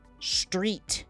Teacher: No extra syllable. Say street. The T stops. Nothing after it.